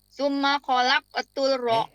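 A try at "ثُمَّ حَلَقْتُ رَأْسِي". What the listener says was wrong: Halak, ada hati-hati bukan kholak tuh. Halak tuh.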